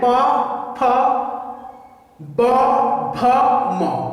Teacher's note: तो इनके उच्चारण में क्या हो रहा है, चाहे अघोष अल्प प्राण है, चाहे महाप्राण है, चाहे सघोष अल्प प्राण है, चाहे महाप्राण है, चाहे सघोष अल्प प्राण नासिक है, इन सब के उच्चारण में क्या हो रहा है, दोनों ओंठों क्या हो रहे हैं, आपस में मिल रहे हैं। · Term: ओष्ठ